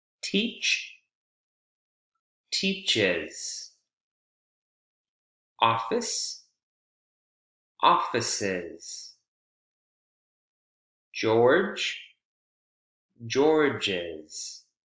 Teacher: So we add the schwa and then the Z consonant sound.